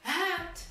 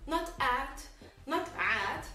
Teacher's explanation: There's a very strong H, very long alif, and the ta at the ending.